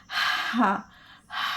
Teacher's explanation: حلق سے نکالیں گے اور ہا ادا کرتے ہوئے سانس کو, ہوا کو باہر نکالیں گے. ہا, ہا پیش ہو.